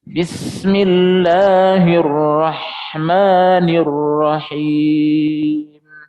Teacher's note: Jadi sin itu kalau dalam ilmu teorinya dia punya sifat al-hams. Ya, mengalirnya nafas ketika disebut.